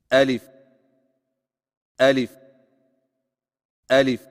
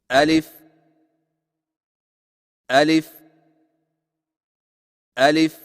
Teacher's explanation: الف کی ادائیگی میں آ کو بغیر کھینچے، لی کو فا کے ساتھ فوراً ملائیں